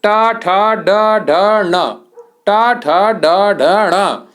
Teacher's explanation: मूर्धन्य में क्या क्या आता है? आपका टा वर्ग पूरा आता है।